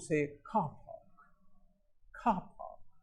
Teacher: the R that comes after the vowel sound, or R which comes before the consonantal sound, as in park, you don't pronounce that